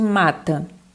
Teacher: Mata é uma paroxítona, por quê? Porque a sílaba mais forte é o ma, tá? Então, ela é uma paroxítona terminada em A.